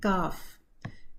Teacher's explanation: काफ का मखरज है back of tongue, ऊपर हार्ड पैलेट और सॉफ्ट पैलेट पे जाके लगती है, तो ये उसका मखरज है, मखरज पे है वो टंग।